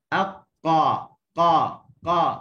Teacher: Pertemuan antara pangkal lidah dengan lelangit lembut ni, dia pertemuan yang kuat lah, sampai suara tertahan terus. Up. Okey, terus tahan. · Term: syiddah